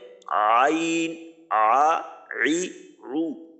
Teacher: 2 number মাখরাজ হলকের মধ্যখান থেকে হলকের মাঝখান হইতে উচ্চারিত হয় আইন হা।